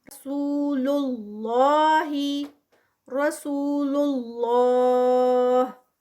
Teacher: را ہیوی اور 2 counts without stop اور ود اسٹاپ 4 کاؤنٹس